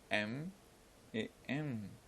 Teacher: Later we had the nasal sound, with the soft palate lowered, and with the passage of the air from the nose, we produce the sound M, M.